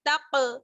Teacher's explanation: تا کو جب آپ قاف سے ملائیں گے تو یہاں پر قلقلہ ہوگا، ٹھیک ہے. تق آواز لوٹ کر واپس آنی چاہیے.